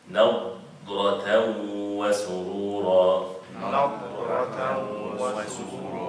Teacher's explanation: the noon is light, the dad is heavy, the ra is heavy